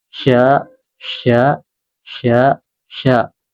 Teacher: jadi shin itu tengah lidah